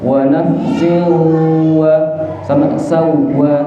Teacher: pas sawwaha ditahannya jangan terlalu lama, cukup 2 huruf